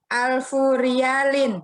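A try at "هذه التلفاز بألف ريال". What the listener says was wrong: Ada bi-nya, ada bi-nya. Bi. Hadat tilfazu bi alfi riyalin. Hadat tilfazu bi alfi riyal. Lihat nih, kasrah ya, karena ada bi. Tapi setelah kata alfu atau alfi, ya di sini selalu majrur karena sebagai mudhof ilaih dan dia bentuknya mufrad. Hadatil fazu bi alfi riyalin.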